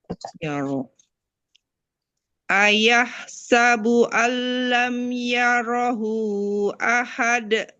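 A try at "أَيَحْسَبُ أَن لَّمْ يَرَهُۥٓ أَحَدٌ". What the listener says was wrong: Itu 4-nya kurang panjang.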